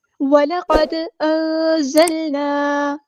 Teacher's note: لام ہمارے یہاں پہ باریک لائٹ لیٹر ہے، قاف ہمارا ہیوی لیٹر ہے، پورا ادا کریں گے، موٹا ادا کریں گے، دال ساکن ہے تو یہاں پہ قلقلہ ہوگا.